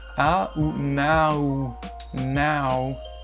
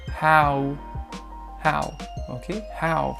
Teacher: Donc on a comme si on prononçait un A, puis un OU. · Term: diphtongue